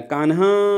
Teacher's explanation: जो अंतिम का आ है उसको हमने बहुत लंबे समय तक बोला, उसी को प्लुत कहा जाता है।